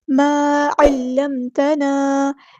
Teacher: ما کا الف مد ہم نے ایک الف کے برابر لمبا کرنا ہے، مد اصلی کرنی ہے، الف جو ہے یہاں پہ ہم باریک پڑھیں گے۔